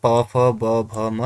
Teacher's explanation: प फ ब भ म ये ओठ से होता है